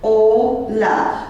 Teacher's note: stress would fall on the next to last syllable